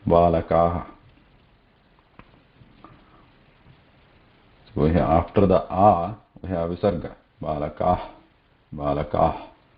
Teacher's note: Whereas visarga doesn't have vibration. Its sthana is same as a hakara, kantha only, and its breath coming out lightly, but no vibration in visarga.